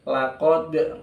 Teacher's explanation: qafnya dia tebal, mufakhamah, tafkhim · Laqad ketemu dal, dalnya qalqalah ya. Nah, ini baru qalqalah.